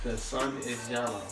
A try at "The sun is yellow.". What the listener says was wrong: No. You use your teeth too much. Use your lips.